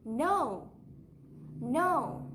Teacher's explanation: There's a sharp rise before the fall. Even if you have only one syllable, you need to go up and then down. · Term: rise-fall combination